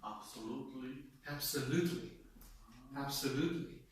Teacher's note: I would say that the main stress counts on the third syllable